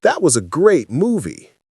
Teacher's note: Voice goes down on movie. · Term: statements go down